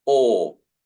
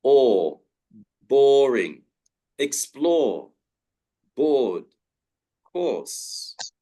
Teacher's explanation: We would say or, and you don't hear the R.